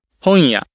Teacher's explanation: For example, in 本 屋、 bookshop, the N sounds like a nasalized Y, anticipating the following non-nasal Y. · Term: syllabic nasal